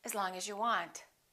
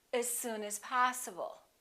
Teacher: The vowel in the preposition generally becomes the neutral sound